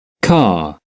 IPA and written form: kɑː (car)